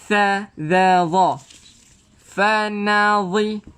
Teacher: Keluarkan hujung lidah di mana? Di antara gigi gunting.